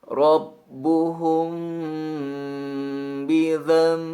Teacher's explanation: Maka panjangkan bunyi bacaan mim sukun ini menjadi 2 sampai 3 harokat